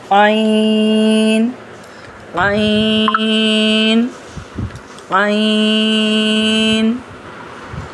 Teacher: हलक के middle portion से अदा होता है। · जुबान पीछे हलक की तरफ नरमी से ले जाते हैं। यानी ये भी हरूफ हल्की में से है।